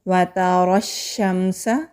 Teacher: रॉ के ऊपर ज़बर है, जब रॉ के ऊपर ज़बर होती है तो रॉ को मोटा पढ़ा जाता है। फिर रॉ को शीन के साथ मिलाएंगे। · शीन के ऊपर तशदीद है, इसलिए शीन को ज़रा मज़बूती के साथ रुक कर अदा करेंगे। फिर शीन को मीम से मिलाएंगे।